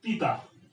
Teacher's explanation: pita, here we have accent on the last syllable